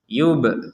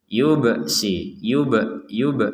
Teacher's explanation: Ada ba sukun kita pantulkan.